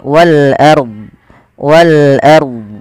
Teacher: di sini rnya kita baca dengan bacaan ro tafkhim ro tafkhim ro tafkhim yaitu rnya dibaca dengan tebal · Ro tafkhim, yaitu ro-nya dibaca dengan tebal,